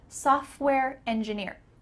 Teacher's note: Notice that the T in the middle of software is cut out. Software. The F and the W are right beside each other when we pronounce it.